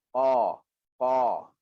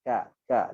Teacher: huruf qaf ini adalah huruf yang tebal. So bila tebal kita tak senyumkan dia. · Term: huruf tebal